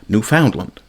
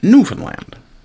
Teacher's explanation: pronouncing the word with the stress on the second syllable, Newf Foundland, rather than the first, Newfoundland.